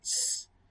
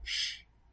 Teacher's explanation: nosotros la articulamos de forma predorso, es decir, el predorso es el que se acerca a la zona alveolar, pero en el caso de este dialecto del español de España, se hace con la zona apicoalveolar, es decir, es con la punta de la lengua.